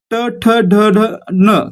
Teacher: ट ठ ढ ढ न कशामध्ये येतात, तर मूर्धन्यामध्ये येतात. यांचा उच्चार करताना आपली जीभ आपल्या मूर्धेला स्पर्श करते.